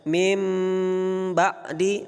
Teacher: ba menjadi mim yang tersembunyi yang digunnahkan dengan pengucapan berapa panjangnya? Dua harokat. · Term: iqlab